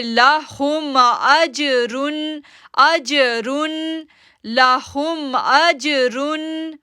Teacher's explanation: ہم پڑھیں گے لاہم، حمزہ زبر جیم ساکن اج، اج ایکو ساؤنڈ ہے، کلکلا کریں گے کیونکہ جیم کے اوپر سکون آ رہی ہے